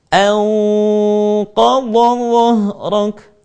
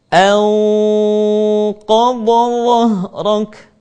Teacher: suara gunnah harus terdengar menebal ketika bertemu dengan huruf qaf, sad, dha, ta, dan huruf dha